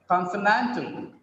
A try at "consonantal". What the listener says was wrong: Don't make it conso, because as NAND gets the stress, the previous SO becomes weaker. Consonantal it doesn't become conso, becomes weak. That's why it is pronounced as consonantal.